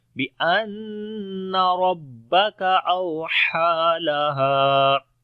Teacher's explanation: بأن ربک اوحی لها، اوحی لها، بأن نون کے اوپر شادہ غنہ کریں گے، آواز کو ناک میں لے کے جائیں گے اور لمبا بھی کریں گے ، ربک را کو موٹا پڑھیں گے، کاف کو باریک پڑھیں · باریک پڑھیں گے، ربک اوحا، واو لین ہے سافٹ پڑھیں گے، ہا کو لمبا کریں گے، کھڑی زبر ہے ، اوحا لہا، آخر میں الف مدہ ہے یہاں پر بھی